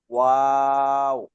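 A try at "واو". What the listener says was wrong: এটা 4 আলিফ, বেশি টানতে হবে।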